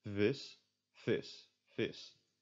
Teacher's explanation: The V's are just often pronounced as F's.